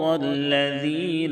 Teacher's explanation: ذال کی ادائیگی میں زا کی طرح سیٹی جیسی آواز نہیں نکلے گی، لذین نہیں پڑھیں گے۔